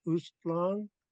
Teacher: In Masset, they don't pronounce the underlined G, so it just sounds like Ustlong.